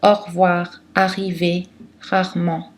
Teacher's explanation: Souvent, les non-natifs ont tendance à dévoiser le R alors qu'il faut le voiser. Donc des expressions difficiles pour les non-natifs sont au revoir, arriver, rarement.